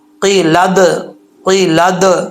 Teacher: دال ساکن ہے اس پہ قلقلہ ہوگا